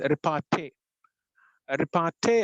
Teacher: Whereas anapestic is the reverse of tactylic. 2 unstressed syllables followed by a stressed syllable.